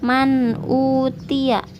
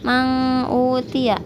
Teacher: ketika nun sukun bertemu dengan Hamzah itu dibacanya izhar dan juga ketika ada tanwin bertemu dengan Hamzah atau Alif ini